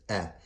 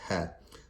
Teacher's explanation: scholars of Arabic have categorized these two letters as coming from the bottom of the throat